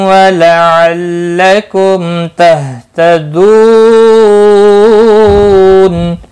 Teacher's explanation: लअल्लकुम, मीम साकिन के बाद ता आया है, इजहार शफवी होगा। तहतदू, दू वाव मद्दा है, एक अलिफ के बराबर खींच कर पढ़ेंगे।